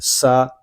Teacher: ایزا، سین زبر سا، سین حروف سفیریہ میں سے ہے، اس میں سیٹی کی آواز آئے گی